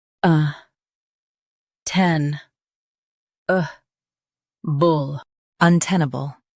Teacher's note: Stress ten and keep un and bull soft.